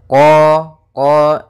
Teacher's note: makhraj daripada huruf q yaitu dari pangkal lidah kita pangkal lidah sehingga huruf qnya harus dibaca dari pangkalnya